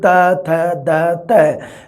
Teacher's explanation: ਦੰਤੀ ਧੁਨੀਆਂ ਜਿਹੜੀਆਂ ਆਪਾਂ ਜਦੋਂ ਪੜ੍ਹਦੇ ਹਾਂ ਆਪਾਂ ਸਾਡੀਆਂ ਤ ਥ ਦ ਇਹਦੇ ਵਿੱਚ ਤੁਸੀਂ ਬੋਲੋਗੇ ਜਦੋਂ ਇਹਨੂੰ ਤ ਥ ਦ ਤ ਤਾਂ ਇਹ ਧੁਨੀਆਂ ਦੇ ਵਿੱਚ ਜੀਭ ਦਾ ਅਗਲਾ ਪਾਸਾ ਯੂਜ ਕੀਤਾ ਜਾ ਰਿਹਾ, ਇਸ ਕਰਕੇ ਇਸ ਨੂੰ ਕਿਹਾ ਜਾਂਦਾ ਹੈ ਦੰਤੀ।